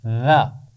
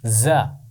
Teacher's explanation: ذال کی آواز بغیر سیٹی کے ادا ہوگی، ذا۔ زا کی آواز کو ہم ذرا سختی سے پڑھیں گے، زا۔